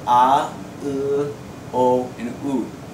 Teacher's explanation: They're all pronounced further back in your mouth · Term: back vowels